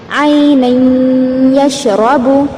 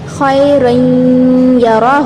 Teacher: ملا رہے ہیں تنوین کی آواز کو نون کی آواز کو بعد والے یا میں، اور غنہ بھی ہو رہا ہے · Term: ادغام